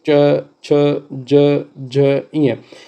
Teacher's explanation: ये कहाँ से निकलते हैं, तालु से निकलते हैं, मुंह के भीतर ऊपरी छत का पिछला भाग।